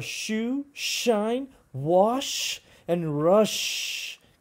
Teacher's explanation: I can make that sound as long as I want because it's a fricative.